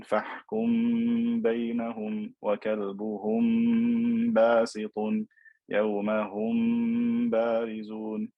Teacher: we elongate the M sound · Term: إخفاء شفوي